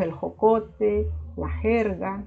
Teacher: Entonces decimos el jocote, la jerga, casi no se oye el sonido de la J. Y la R es vibrante para nosotros.